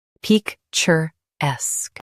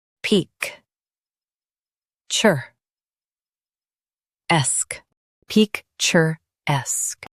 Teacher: Stress esque. Keep pic soft.